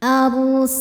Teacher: Karena ada baris fathah panjang di atas huruf nun. Cara bacanya panjang dua harakat. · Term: mad thobi'i muqaddar